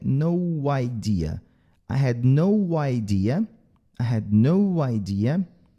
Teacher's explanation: esse O, como ele tem um som de OU, a gente coloca o som de W aqui para a gente saber que é no idea.